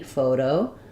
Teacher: we use a flap T here. The T sounds more like a D, photo. We still have a clear O in the second syllable.